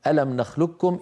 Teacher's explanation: عاصم فاننا ندغم القاف في الكافي من قوله تعالى الم نخلقكم ادغاما كاملا ادغاما محضا ويكون نطقها بكاف مشدده